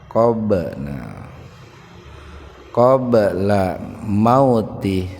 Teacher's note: Ba sukun di tengah-tengah kata. Jadi membaca ba-nya itu dipantulkan, dihentakkan. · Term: qalqalah sugro